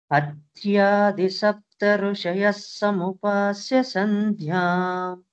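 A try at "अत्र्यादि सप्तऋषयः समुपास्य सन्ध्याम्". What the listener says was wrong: That Rushayas, you correct it as Rishayas, not a Rishayas, not a Rushayas. It is in between like Krishna, Vrinda, Vrindabigai. R dot we have given. It is in between.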